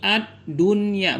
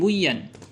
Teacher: karena berada dalam satu kata maka tidak diidghamkan tetapi dibaca izhar dengan izhar mutlak ataupun izhar wajib